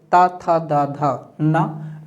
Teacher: तू अर्थात ता वर्ग, ता था दा धा ना, ला और दंत श का उच्चारण स्थान दंत होता है। दंत्य होना चाहिए दोस्तों, दंत्य।